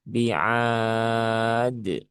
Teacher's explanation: Jadi tidak ditekan berlebihan, tidak juga ditambahkan dengan huruf hamzah di belakang menjadi d. Nah, begitu. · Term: qalqalah